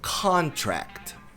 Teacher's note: Con é tônica e o tract é subtônica. Ela também é forte, mas mais fraca que o con.